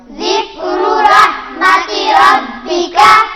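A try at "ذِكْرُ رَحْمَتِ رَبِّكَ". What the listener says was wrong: ये जाल है, जाल जा नहीं है, जाल है, नरमी से अदा होगा।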